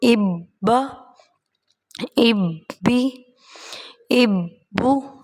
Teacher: سختی بھی کریں گے اور با کی آواز 2 بار سنائی دے گی پڑھتے ہوئے، ایک بار پچھلے حرف کے ساتھ مل کے، دوسری بار خود